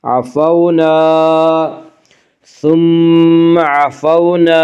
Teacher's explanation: عفونا، الف مدہ، الف ہمیشہ مدہ ہوتا ہے، الف سے پہلے ہمیشہ زبر ہوتا ہے، الف مدہ کو 1 الف کے برابر کھینچ کر پڑھیں گے